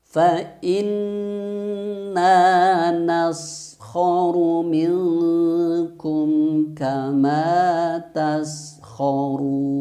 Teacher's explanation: Jadi supaya tidak terjadi tawallud atau memantul, maka coba dialirkan desisnya, ya, atau sifat sofirnya itu dikeluarkan, mendesis.